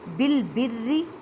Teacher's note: اب را کو باریک پڑھیں کیونکہ را کے نیچے زیر ہے۔